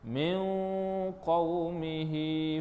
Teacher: Min qaumihi, nun mati bertemu dengan qaf. Ni adalah ikhfa hakiki. Cara bacaannya dengung 2 harakat. Dengung tu dengung cara ikhfa, ya.